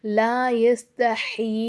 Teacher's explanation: சின்ன மது கொடுத்திருக்காங்க பிளஸ் வந்து ஒரு கடா சேரும் கொடுத்திருக்காங்க அப்ப நம்ம என்ன செய்யணும் இதை நாலு அலிஃப்க்கு நீட்டணும்